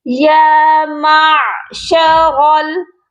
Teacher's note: یا معشر میم کو عین کے ساتھ ملائیں گے، اور یہاں پر بہت سے لوگ غلطی کر جاتے ہیں، یا معشرل میم کو لمبا کر دیتے ہیں اور عین کو پڑھتے ہی نہیں ہیں۔ تو آپ نے میم کو عین کے ساتھ ملانا ہے تو درمیان والے حلق سے عین کی آواز آئے گی، یا معشرل۔ را کو موٹا کریں گے اور اس کو لام ساکن کے ساتھ ملا کر پڑھا جائے گا۔